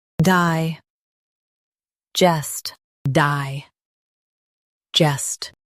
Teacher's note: Emphasize jest and keep die smooth.